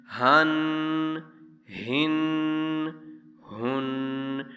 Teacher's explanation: اس ہا کو سینے سے ادا کیا جاتا ہے۔